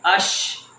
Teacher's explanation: اش اس کے اوپر آواز نہیں چھوڑنی، ڈبل شین کی آواز نہیں نکالنی.